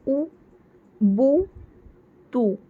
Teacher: جب ہم پیش والے حرف کو پڑھیں گے نا تو آواز سامنے یا آگے کو جائیں گی، اور ہونٹوں کے جو سائڈز ہوں گے، کارنرز، وہ مل کر بیچ کا حصہ جو سرکل ٹائپ میں ہو جائے گا اور وہ اوپن رہیں گا